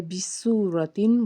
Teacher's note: واو ساکن سے پیچھے پیش ہونے کی وجہ سے ہم نے اس کو ایک الف کے برابر کھینچ کے پڑھا۔ آگے ہے بِسُورَةٍ، واو ساکن سے پیچھے پیش، ایک الف کے برابر کھینچا۔